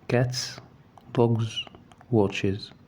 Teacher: تلاحظ الاس هنا اختلف نطقها في ال3 كلمات. cats نطقناها اس عادية، dogs نطقناها ز dogs، watches نطقناها إز. لاحظ الفرق بين نطق الز في dogs على طول، لكن watches إز.